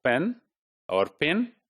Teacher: Per is the first plosive, which is bilabial and it is voiceless.